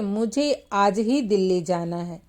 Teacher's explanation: आज ही जो शब्द है इस पर बलाघात है, अर्थात इसको हम जोर दे के थोड़ा सा बोलते हैं